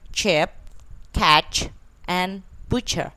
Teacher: the first affricative is ch, which is voiceless, alveopalatal, and affricate. The initial, medial, final like chip, catch, and butcher.